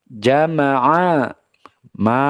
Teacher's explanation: makhrajnya Jim dari tengah lidah